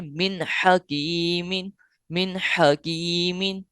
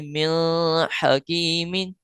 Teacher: اس میں اخفا نہیں کریں گے یعنی غنہ کر کے نہیں پڑھیں گے، یعنی من حکیمن یہ نہیں پڑھیں گے، یہ غلط طریقہ ہوگا۔ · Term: اظہار